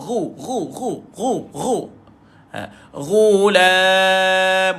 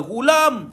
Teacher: Ghu duduk dekat hujung kerongkong.